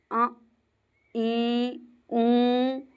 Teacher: इसमें मुख के साथ-साथ नासिका का भी उपयोग किया जाता है। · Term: अनुनासिक